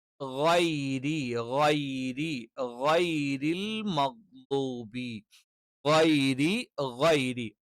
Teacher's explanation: ഏകദേശം ഗ, ഗ ഒക്കെ ഉച്ചരിച്ചിട്ട് നമ്മൾ വീണ്ടും തൊണ്ടയിലേക്ക് അങ്ങോട്ട് ഇറങ്ങി ചെല്ലുമ്പോൾ തൊണ്ടയുടെ ഏറ്റവും മുകൾ ഭാഗത്തു നിന്നാണ് ഗ എന്നുള്ള ഉച്ചാരണം വരുന്നത്.